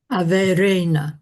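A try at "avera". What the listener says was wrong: That was perfect.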